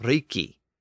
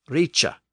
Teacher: sound but remember in Old English it was pronounced Rich so it had experienced that shift from the k sound to the CH sound in Old English